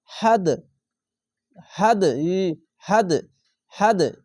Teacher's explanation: একটি দাল দালের উপরে সাকিন আছে এখানে দেখেন সাকিন আছে তার জন্য এখানে কলকলা হয়ে যাবে